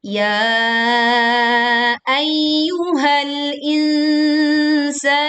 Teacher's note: Ya dibaca 4 sampai 5 harokat panjangnya